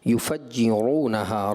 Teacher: را پر ضمہ ہے یعنی کہ پیش ہے، اس را کو ہم نے پر پڑھنا ہوتا ہے، وہ را آپ نے باریک کر دی۔